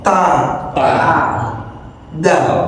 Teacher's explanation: Ujung lidah tempelkan ke gusi atas, tempat nancapnya gigi seri.